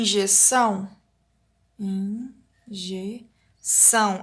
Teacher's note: injeção é a última sílaba tônica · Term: oxítona